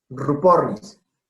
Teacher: cuando es comienzo de palabra tiene ese sonido doble o triple de la R, entonces sabemos que no cambia cuando está compuesta. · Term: doble R